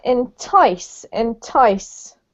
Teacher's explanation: emphasis on the second syllable there